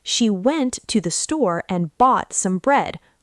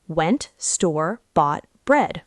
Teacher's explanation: the other words were just to the and some. Those are the schwa sounds.